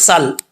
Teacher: سین میں سیٹی آئے گی کیونکہ حروف صفیریہ میں سے ہے، بریک پڑھا جائے گا.